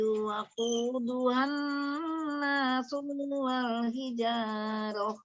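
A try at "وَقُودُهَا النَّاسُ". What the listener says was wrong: Waquduhan nasual, su-nya pendek, ulang.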